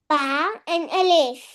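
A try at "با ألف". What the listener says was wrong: बा अलिफ। एंड नहीं लगाना, बोलना है बा अलिफ, क्या बोलना है?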